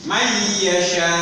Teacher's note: Dengung itu melewati hidung. Pengucapannya itu melewati hidung, ya, sehingga terdengar mendengung.